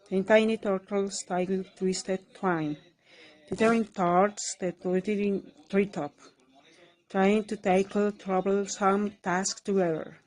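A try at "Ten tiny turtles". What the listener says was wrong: Couple of sounds were off, but altogether, lovely. And great rhythm.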